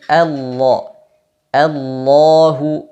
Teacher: huruf lam di lafzul jalalah ini dibaca dengan tebal ketika didahului fathah dan dhamah maka dibaca all jangan Allah Allah tapi Allah Allahu dan dipanjangkan